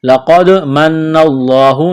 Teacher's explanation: لقد، قاف کو موٹا کرنا ہے، دال ساکن ہے، قلقلہ کریں گے دال پر، لقد من اللہ، نون مشدد پر غنہ کریں گے، آواز ناک میں چھپائیں گے